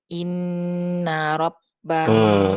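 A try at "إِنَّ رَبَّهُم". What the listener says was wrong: Ibu, rahangnya naik lagi, rahangnya nutup lagi. Ulangi lagi.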